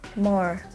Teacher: The sound is called voiced bilabial nasals, for example, in the word more.